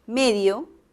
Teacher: la palabra medio es una palabra que puede pronunciarse de dos maneras medio con acento en la primera sílaba y también puede pronunciarse medio puede moverse el acento ojo que